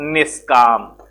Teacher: विसर्ग में नियम होता है कि हिरस्व ई या हिरस्व ऊ स्वर के बाद विसर्ग के बाद का पा फा, का पा फा, ट मा ये वर्ण आते हैं तो मेल कराने पर विसर्ग के स्थान पर स्वर रहित मूर्धन्य सा हो जाता है। जैसे निस की जगह मैं लिखता हूं निही प्लस काम।